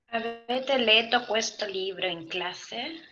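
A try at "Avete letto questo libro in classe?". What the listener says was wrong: Pero lo mismo que te he dicho en todas las otras veces, necesito, y de verdad lo necesito, que me pronuncies las dobles. Así es que, aunque te parezca exagerado, a la larga va a ser más fácil como bajarle la intensidad a esa exageración a que si te acostumbras desde ya a no pronunciar dobles.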